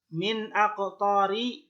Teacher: Kemudian min aqtari ini idhar halqi ya, sebab nun sukun bertemu dengan alif atau hamzah, bacanya jelas